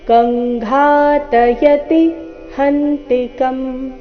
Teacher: ಕಂ ಅನುಸ್ವಾರದ ಉಚ್ಚಾರಣೆ, ಕವರ್ಗದ ಅನುನಾಸಿಕ.